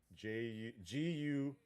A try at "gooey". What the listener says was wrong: G's not a J. G's a G. OOEY.